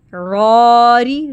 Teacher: را کی ساؤنڈ باریک لائٹ ہوگی